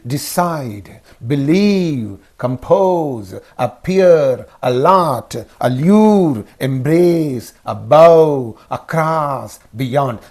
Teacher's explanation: For the verbs and prepositions consisting of two syllables, the stress is used on the second syllable.